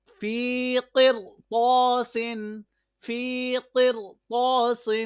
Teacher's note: را ساکن سے پہلے قاف کے نیچے زیر ہے لیکن اس کے فوراً بعد حروف مستعلیہ آ رہا ہے، اس لیے یہ را موٹا ہو رہا ہے۔ الف اس لیے موٹا ہو رہا ہے کہ حروف سے پہلے موٹا حرف آ رہا ہے۔